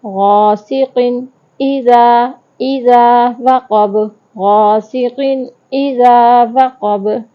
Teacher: تنوین آ گئی، آگے حمزہ آ گیا، ہم غنہ نہیں کریں گے